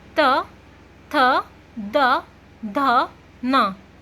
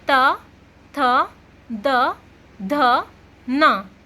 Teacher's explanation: जब हमारी जीभ दांत पर टच करती ना तो उसे हम कहते हैं दंत ध्वनि।